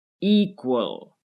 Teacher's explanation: With equal, the stress is on the first syllable, equal. As we've seen with travel, the stress is also on the first syllable, travel.